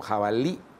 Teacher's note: muchos yucatecos pronuncian con la I glotalizada final como jabalí